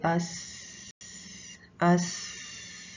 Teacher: मसलन जैसे हम देखते हैं लेटर सीन को, तो अब इसमें जो आवाज़ है वो जारी रहती है, कैसे? अस, ठीक है, इसकी आवाज़ चलती रहती है।